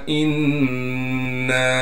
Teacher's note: हमज़ा को नून से मिलाएंगे गुन्ने के साथ।